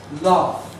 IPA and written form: lɑːf (laugh)